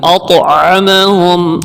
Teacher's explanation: یہ ذال کو نرمی سے ادا کریں گے, اور یا ساکن سے پہلے زیر ہے, یہاں پر کھینچ کے پڑھیں گے, اور یہ مد بھی ہے, مدہ بھی ہے, مد بھی ہے, اور ذال کو نرمی سے بھی پڑھنا ہے. الذی طا موٹا بھی ہے اور طا ساکن بھی ہے, اس لیے یہاں پر قلقلہ بھی ہوگا. یہاں موٹا بھی کرنا ہے طا کو, اور قلقلہ بھی کرنا ہے.